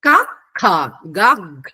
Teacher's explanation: క అనేది అల్పాక్షరం అంటారు సంస్కృతంలో. ఖ అంటే మహాప్రాణం అంటారు. గ అల్పప్రాణం, ఘ మహాప్రాణం.